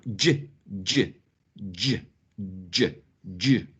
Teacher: Because you have to stop and then release the air. You make a stop and release the air, okay? This combination of a stop and a fricative, right? It's called affricate